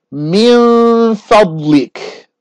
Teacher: However, it's more rewardable to apply the rules of recitation of tajweed and to hide the noon and prepare the fat and to make a ghunnah from your nose. That ghunnah from your nose is the evidence that there was a noon that you're hiding. And so when I pronounce it now, I'm not going to say the noon.